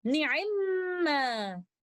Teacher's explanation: In Surah An-Nisa, ayah number 58, the word ni'imma originally is na'imama, but the first letter meme acquires a sukoon and merges into the second letter meme, and we recite it with most complete gunna